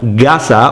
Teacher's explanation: you hear the G sound now rather than the K sound